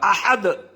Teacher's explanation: یہاں پہ احدن ہے مگر اس کو ایک پیش نکال دیا جائے گا یا دونوں پیشوں کو سائلنٹ کیا جائے گا اگر رک جائے. احد اگر رک جاتے ہیں تو اس کو قلقلہ کر کے پڑھا جائے گا